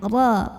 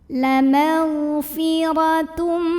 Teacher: Huruf ra dibunyikan secara tafkhim karena ra-nya berbaris fathah. Maka cara bacanya ra ini dibaca dengan menebalkannya. Ra, pangkal lidah kita dinaikkan.